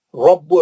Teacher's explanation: रा मोटा पढ़ेंगे, बा को सख्ती से पढ़ेंगे